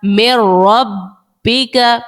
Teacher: میم نون را زیر مر را با زبر رب من رب با زیر بی من ربی کاف زبر کا من ربک یہاں پر آپ دیکھیں نون ساکن کے بعد جو ہے وہ را حروف یرملون کا ہے، ادغام کا قاعدہ لگا دیا، لیکن یہاں پر غنہ نہیں کیا کیونکہ را پہ غنہ نہیں کرتے. میم نون را زیر مر را با زبر رب مر رب با زیر بی مر رب بی ها میم زیر ہم مر رب بہم میم نون لام زیر مل لام زبر لا لا دال نون پیش دن ملدن ہا پیش ہو ملدن ہو.